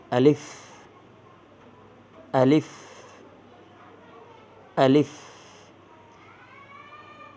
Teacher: আমি প্রথমে দ্রুত বলেছি এবং শেষে ফ যুক্ত হয়েছে এবং হালকা বাতাস বের হবে